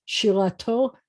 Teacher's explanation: the accent's at the end of the word